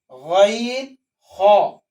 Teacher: गैन खा ये हल्क के ऊपर वाले हिस्से से अदा होते हैं। दाढ़ी के बाद जो हल्क है, दाढ़ी में टच होते हुए जो हल्क है, यहां से गैन खा अदा होते हैं। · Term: हुरूफ हलकिया